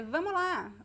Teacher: We drop the S. It's a very common reduction, informal language.